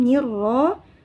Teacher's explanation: Ro dibaca tebal disebabkan berharokat fathah.